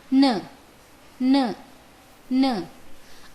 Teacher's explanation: अस्य उच्चारणस्थानं नासिकया सह दन्ताः सन्ति।